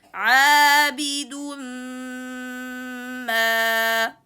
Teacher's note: Alif mad, make sure to make it from jawf.